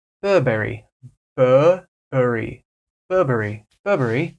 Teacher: Burberry cuz you know we love our hard RS in America in England they might pronounce they'll be a little bit softer with these RS